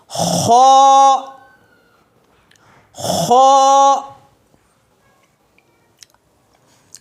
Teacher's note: جب ہم کھنکارتے ہیں یا تھوکنے کی کوشش کرتے ہیں، بلغم نکالنے کی کوشش کرتے ہیں، تو جس جگہ سے وہ آوازیں آتی ہیں ایگزیکٹلی وہ خ کا پلیس ہے، خ کا پوائنٹ ہے۔ خ، خ کے لیے منہ کو موٹا کریں گے، اس کو کہتے ہیں پر پڑھنا، اس کو کہتے ہیں پر پڑھنا، منہ کو موٹا کر کے پڑھنا، اس کو کہتے ہیں پر پڑھنا۔